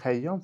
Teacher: Sözün kökünün tərkibində qoşa y samiti gəldikdə həmin qoşa y samiti tələffüz zamanı düşmür.